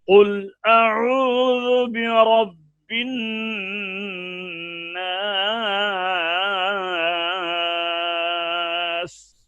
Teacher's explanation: نون کے اوپر شد ہے، غنہ کیا جائے گا ایک الف کی مقدار میں